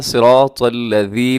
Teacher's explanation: نرمی کے ساتھ پڑھنا ہے، اور اس ذال میں سیٹی نہیں ہوتی